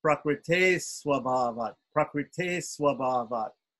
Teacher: But what I did was I changed it to an S to make it easier for us to chant because the visarga takes the flavor of the next coming S. So it's a regular dental S without any accent on it or under it. And therefore, it becomes the same type of S.